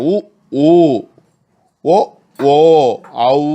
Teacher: அங்காப்பு என்பது இப்போ எப்படி கடந்த நூற்பாவில் சேர்த்தோமோ அது மாதிரி இதழை சேர்த்து அங்காப்போடு வாய் திறத்தலோடு இதழ் குவிவே. இதழை குவித்து கூறும் முயற்சியால் பிறப்பன ஆகும்.